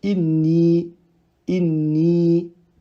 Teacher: Le noun avant lui possède une kasra, du coup forcément, ce ya sera un prolongement de deux temps, tel que inni, inni.